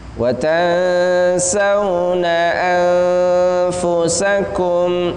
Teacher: Atamurunannasa bil birri wa di sana ada nun mati ketemu dengan sin, maka bacaannya samar-samar atau konsentrasi suara dengungnya di antara hidung dan mulut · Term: ikhfa